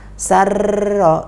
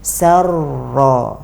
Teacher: Dan ini bukan kita melafadzkannya sarro, enggak, tapi harus kita sembunyikan getaran atau takrir pada huruf ro